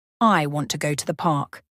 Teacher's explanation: the words want go and park are stronger while to and the are much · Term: stress timed language